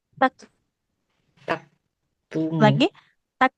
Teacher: Huruf kaf harus mengalirkan nafas.